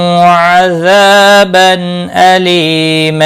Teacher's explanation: ازا الف مدہ ہے، ایک الف کے برابر کھینچ کر پڑھیں گے. تنوین کے بعد حمزہ آیا ہے، اظہار حلقی ہوگا، غنہ نہیں کریں گے. لی یا مدہ ہے، ایک الف کے برابر کھینچ کر پڑھیں گے اور وقف کی صورت میں وقف بالابدال ہوگا، دو زبر کو بدل کر ایک زبر کے ساتھ پڑھیں گے، ایک الف کے برابر کھینچ کر وقف کریں گے.